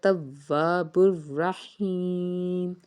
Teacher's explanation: را کو پر پڑھیں گے اور را کے اوپر تشدید ہے تو اس کو ہم نے 2 بار پڑھنا ہے